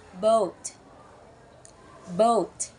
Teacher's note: When saying boat, your mouth is slightly open and the tongue is mid to back of the mouth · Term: O sound